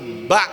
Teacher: Ba itu tempat keluarnya dua bibir, syafatain.